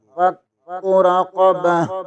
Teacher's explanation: تا کو ختم کر کے ہا پڑھیں گے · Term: وقت کی صورت